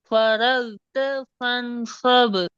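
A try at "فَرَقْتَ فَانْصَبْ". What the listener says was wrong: Join பண்ணுங்களே, join பண்ணுங்களே. ரெண்டு ஃபரகுத்த ஃபன்ஸப்.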